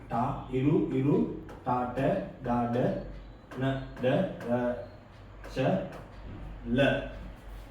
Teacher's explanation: දිවේ අග කොටස මුදුන වෙත සමීප වීම නිසා උපදින ශබ්ද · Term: මූර්ධ ජාක්ෂර